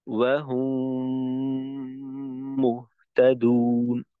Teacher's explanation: তো মিম সাকিনের পরে যদি মিম আসে তখন দ্বিতীয় মিমে তাসদিদ দিয়ে মিম সাকিনকে গুণনা সহকারে মিলিয়ে পড়তে হবে। যেমন ওয়াহুম মুহতাদুন, এইখানে ঠোঁটকে ঠোঁটের সঙ্গে শক্তভাবেই লাগাবো, এইখানে যেন আলতো করে না লাগে। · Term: ইদগামে সাফাবি